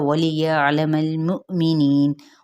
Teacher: آئین کو وسط حلق سے ادا کرنا ہے